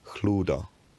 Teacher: the fricative hardens to a plosive